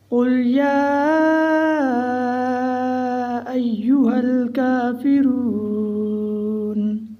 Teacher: اب 4 الف کا برابر ماد کو لمبا کرنا ہے اور 1 الف کے برابر کھڑی زبر کو۔ اب یا کو ہم 5 الف کا برابر لمبا کریں گے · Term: ماد منفصل